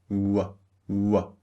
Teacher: target practice remember the second sound W is a voiced sound start with very rounded lips w w and finish with relaxed lips as in we